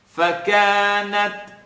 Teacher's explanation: you're hearing a little click, or a pop rather in this case, on the ta.